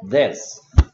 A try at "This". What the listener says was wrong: th 있으니까 혀를 살짝 물어야지. 혀가 하나도 안 보여. 메롱메롱 하는 소리야.